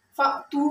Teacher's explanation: فأتوا میں حمزہ ساکن اس کو جھٹکے کے ساتھ پڑھنے